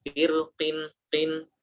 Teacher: qafnya jelaskan dari pangkal lidah